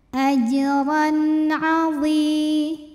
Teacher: Maka bunyi tanwin yang tadinya n tetap saja n. Artinya kita bunyikan tanwinnya ini jelas. Izhar artinya jelas. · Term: izhar halqi